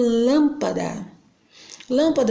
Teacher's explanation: a antepenúltima sílaba é a tônica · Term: proparoxítonas